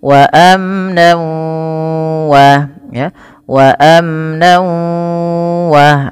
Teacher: Kalau gunnah bi gunnah harus disertai dengan penahanan pada lafal yang dimasukkan. Ketika tanwinnya masuk ke waw, maka bunyi wawnya ditahan. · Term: idgham bi gunnah